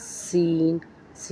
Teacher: ज़बान की नोक को नीचे के दो दांतों के किनारे लगाकर अदा होता है सीन की आवाज़ सीटी की तरह होती है